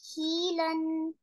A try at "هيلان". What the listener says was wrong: Also, you say like here, mad. No mad here.